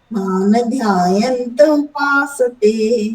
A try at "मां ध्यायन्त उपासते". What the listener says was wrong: मान नहीं, मान हलंत। मान